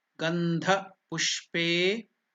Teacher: I told that that's Mahaprana Dha. Gandha pushpe, A is elongated.